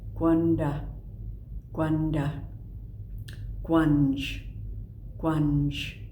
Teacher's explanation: The K with a little raised W, rounded K